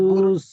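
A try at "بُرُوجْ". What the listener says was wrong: রুস নয়, রুজ। হ্যাঁ, জিম উচ্চারণ করতে হবে। বুরুজ।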